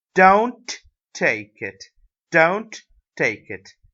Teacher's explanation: The stress is on the word don't.